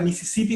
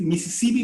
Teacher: con los dientes bien separado ya la s sale como una s h como que sale como soplado